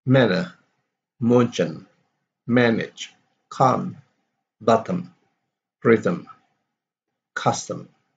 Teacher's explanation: And then we have the consonant M, which is produced by closing the lips, so we have to close our lips and letting the air go through the nose. And during the production, the vocal cords only vibrate, also vibrate so that they produce a voice sound.